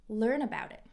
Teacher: This becomes a 'flap t' --> 'd' with linking.